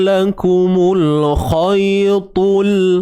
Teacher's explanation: Jadi jangan kita baca lakumul khaytul bunyi kha kan. Huruf kha ni dia ada sifat tebal dia, tebal selamanya. Kha ni kita punya hujung kerongkong ni tuan-puan.